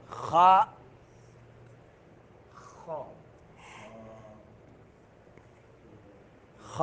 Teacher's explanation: خا خا خا جو ہے حلق کے اس حصے سے جو منہ کے قریب ہے